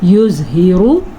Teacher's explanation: ज़रा भी रा को हम लंबा नहीं करेंगे। युज़हिरु, रा को पुर पढ़ेंगे और ज़ुआ को भी पुर पढ़ेंगे।